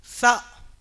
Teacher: یہ نوکے زبان یہ سامنے کے دانتوں کی جڑ میں لگتی ہے تو سا ادا ہوتا ہے